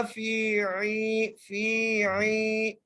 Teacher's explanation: فا ہوا، فا کو ایک الف کی مقدار کھینچ کے پڑھنا ہے کیونکہ یہاں پر یا مدہ ہے. فی عی، عین کو بھی ایک الف کی مقدار کھینچ کے پڑھیں گے